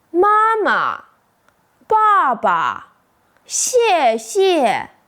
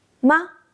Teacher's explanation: You don't stress it, right? It's light, quick, and soft. That's exactly the neutral tone in Chinese.